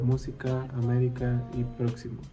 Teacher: Se acentúan en la antepenúltima sílaba y siempre llevan tilde. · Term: palabras esdrújulas